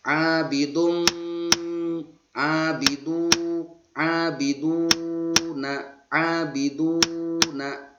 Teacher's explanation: Sebelum harokat dhammah uraiannya. Disebut hukum bacanya mad tabi'i dibaca panjang 2 harokat atau 2 ketukan.